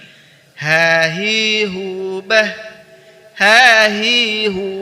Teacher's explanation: huruf H dikeluarkan dari tenggorokan bagian bawah seperti kita mengucapkan huruf hamzah